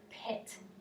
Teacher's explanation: when we say the word pit, we use more aspiration after the letter P. And he's saying pit, because in Spanish it's much shorter.